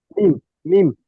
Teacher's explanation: দুই ঠোঁটের শুকনো অংশ থেকে মিম